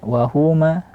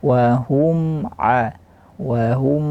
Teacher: tapi bunyikan saja gunahnya sedikit